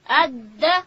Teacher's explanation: د ژبې سر به د لوړې زامې د مخ د دوو غاښو و بیخو ته ورولو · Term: دال